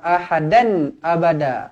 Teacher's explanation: tanwin selari bertemu dengan Hamzah izhar halqi jelas dan terang